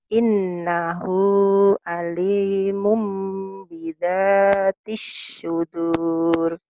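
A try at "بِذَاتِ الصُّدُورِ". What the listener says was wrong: Sad ya, jangan kesin. Bidatis sudur. Anginnya pelan. Bidatis sudur.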